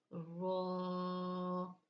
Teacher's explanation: जबान का सिरा और ऊपर के दांतों के अंदरूनी किनारा रो जबान की नोक और मुकाबिल के तालू से यानी कि सामने वाला जो हमारा तालू है जो फ्रंट प हमारे सामने आ रहा है उस तालू से